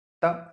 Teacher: आपकी जीभ आपके दांतों को छूती है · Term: दंत व्यंजन